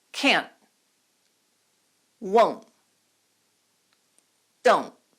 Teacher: you can pronounce words like can't, won't, don't, without aspirating the T. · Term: glottalized T